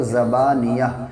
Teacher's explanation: تو یہ جو تا ہے نا، جب ملائیں گے تو تا پڑھا جائے گا، زبانیۃ کلا، اور رک جائیں گے تو زبانیہ، یعنی یہ تا ہا بن جائے گا